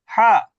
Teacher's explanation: হা গলার মধ্য থেকে হা